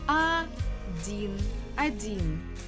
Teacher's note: the stress actually falls on E, and O is unstressed, so we pronounce it as letter A. But we have to spell it while we're writing with O.